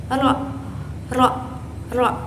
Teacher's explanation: ro ini keluar dari ujung lidah yang dekat gusi atas dengan sedikit getaran, yaitu bersifat majhura. Cara pengucapannya itu ro. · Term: huruf ro